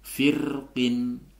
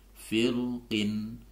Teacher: Jadi boleh dibaca rnya boleh dibaca tipis firqin ataupun dibaca tebal firqin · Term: tipis tarqik